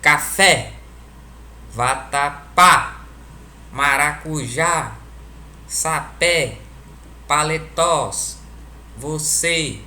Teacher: É que na divisão silábica, a última sílaba são as mais fortes. Quando a gente pronuncia a palavra, a última sílaba é a que se destaca. · Veja que ao pronunciar essas palavras, a última sílaba é a que é a mais forte. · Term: Oxítonas